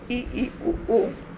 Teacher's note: संवरित में मुख द्वार केवल लगभग बंद ही रहता है